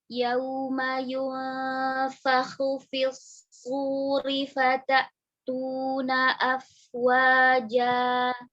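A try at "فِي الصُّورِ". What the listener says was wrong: Fisuri. Tipiskan lagi roh. Ri.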